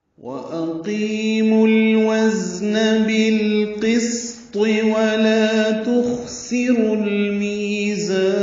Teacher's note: واو ہونٹوں کی نا تمام گلائی سے ادا ہوگی، و آگے لائیں گے ہونٹ ، اقیمو میں حمزہ اقصی حلق سے ادا کریں گے، جلدی